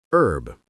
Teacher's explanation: The H is completely silent.